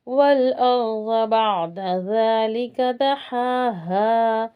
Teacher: ज़ाद के लिए ज़बान थोड़ा साइड में ऊपर के 5 दाढ़ों को लगेगी